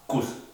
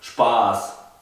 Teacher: si escribo Kuss, que significa beso, la U es corta, no es larga como la A de Spaß.